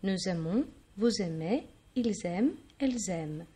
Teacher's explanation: you listen to a Z sound because we have a consonant and then a vowel